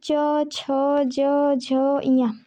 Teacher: स्पर्शी संघर्ष जिन व्यंजनों के उच्चारण में एक उच्चारण अवयव दूसरे उच्चारण अवयव को इस प्रकार स्पर्श करता है कि श्वास के कुछ संघर्ष यानी रगड़ के साथ निकलती है